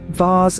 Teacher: In English, V is pronounced with the teeth biting the lower lip, causing a slight vibration.